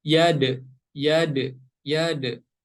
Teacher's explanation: Huruf dal yang berharokat sukun, cara membacanya harus dipantulkan.